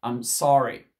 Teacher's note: l'accent américain plutôt, on va dire plutôt accent américain, le R, il est plus ici au fond du palais.